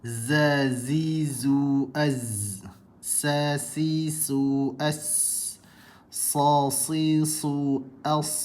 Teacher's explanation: hujung lidah bertemu bahagian pangkal gigi kacip bawah, keluar daripada huruf zai, sin dan sad.